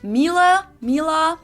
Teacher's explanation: English native speakers usually say something like Miele, Mila. So it usually sounds more like an A in the end,